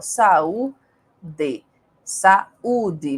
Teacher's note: duas vogais que se encontram na palavra mas na divisão silábica elas se separam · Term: iato